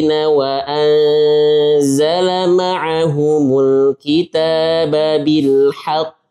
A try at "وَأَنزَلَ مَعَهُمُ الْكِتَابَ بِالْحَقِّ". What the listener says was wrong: Yang pertama bukan wa anzala, jangan tekan zai. Jangan tekan, ini takalluf wa anzala. Nah, kemudian bil haqq. Di sini orang yang mikir kalau qalqalah kubra harus kita ada spasi. Bil haqq itu salah.